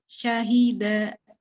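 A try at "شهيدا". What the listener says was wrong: Baik, barakallahu fiik ya.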